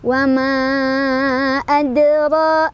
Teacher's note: Dalnya adalah qalqalah sughra karena ada huruf qalqalah yang sukunnya asli ya, bukan karena disukunkan. Cara bacanya dipantulkan, pantulannya kecil aja ngalir.